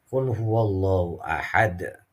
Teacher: Karena huruf qalqalahnya hidup tetapi dimatikan, makanya dihukumi qalqalah kubro.